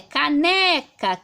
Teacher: Agora a sílaba que eu coloco mais força, porque nós em português falamos quando o ar sai, quando expelimos o ar, percebemos que é o né, caneca, aqui a gente põe mais força, tá? Então ela é uma paroxítona, ou seja, a penúltima sílaba é mais forte